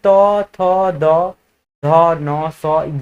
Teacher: ये सब दंत्य वर्ण है जो एक ही जगह से उच्चारित किया जाता है